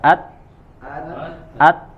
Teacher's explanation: Dia tertahan ya karena dia berarti dia memiliki sifat syiddah.